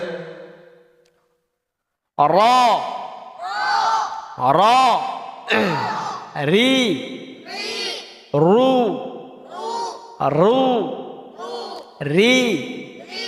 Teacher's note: বাতাস বন্ধ হবে, আওয়াজ অল্প চালু হবে, জিহ্বার গোড়া নিচু হবে, জিহ্বার মধ্যখান তালু হতে পৃথক হবে, তারপরে উচ্চারণ ধীর হবে, বারবার উচ্চারণ হবে। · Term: তাকরার